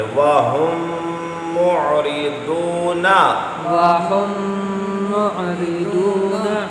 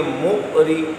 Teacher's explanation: یہاں آپ نے میم ساکن کے بعد میم آیا ادغام کیا اور آگے مو ایسے جھٹکا نہیں دینا، عین ہے مو، عین کو واضح کرنا ہے. اگر آپ پڑھیں گے مؤری یہ تو جھٹکا ہو گیا، تو جھٹکا نہیں ہے، جھٹکا ہوتا ہے حمزہ ساکن آنے کی وجہ سے.